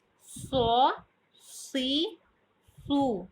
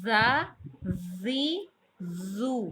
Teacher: جب زبان کی نوک اوپر اور نیچے کے سامنے والے دو دانت آپس میں ملیں اور زبان کی نوک ان سے ٹکرائے یا لگے تو ان حروف کی ادائیگی ہوتی ہے اور ان میں سیٹی کی صفت پائی جاتی ہے، یعنی کہ جب ان کو ادا کرتے ہیں تو ایسے سیٹی سی آواز پیدا ہوتی ہے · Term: حروف صفیریہ